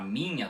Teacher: o nh na palavra minha do português fosse um n normal e logo em seguida dele um i semivogal pronunciado bem rapidamente